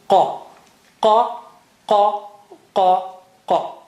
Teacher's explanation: It is from inside edge of the tongue touching behind uvula.